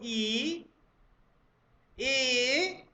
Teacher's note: ई, जीभ का अगला हिस्सा उठेगा, उठने का प्रयत्न करेगा, ई ए। ठीक है, और जब आप ए बोल रहे हैं तो जीभ का अगला हिस्सा बिल्कुल दांतों से जाकर छुप जाएगा, है ना, एकदम दांतों को धक्का देना शुरू कर देता है, निचले निचले दांतों को। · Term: अग्रस्वर